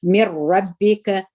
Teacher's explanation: دلته نون ساکن دی او وروسته را راغلی ده ادغام بل غونې څخه کېږي من ربک رسول دغه لام مشتاسي دغه میم سره یو ځای